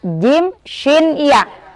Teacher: Tempatnya di perut lidah, menempel di langit-langit atas. Makhorijul hurufnya di situ.